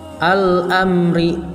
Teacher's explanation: Yang keempat yaitu al-amri, terdapat hukum bacaan alif lam qamariyah, yaitu disebabkan alif lam bertemu dengan alif, maka lamnya itu dibaca jelas dan tegas